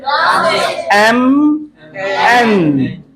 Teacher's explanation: M is a bilabial sound, इसमें दो lips involve होते हैं, लेकिन आवाज नाक से निकलती। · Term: नेजल साउंड